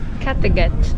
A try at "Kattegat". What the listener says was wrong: Kattegat. Ok, sueca. Mas você tá pronunciando tipo em inglês, né? Eu tô pronunciando em sueco.